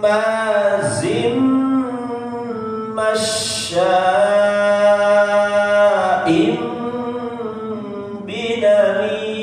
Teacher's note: Nah, ini semuanya ditahan Pak ya. Sama kadar panjangnya 2 sampai 3 ya, atau 4 lah boleh ya, dimaksimalkan sampai 4.